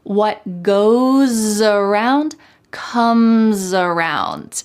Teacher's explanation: the S at the end of goes is followed by a vowel. So that S is going to sound like a Z in American English.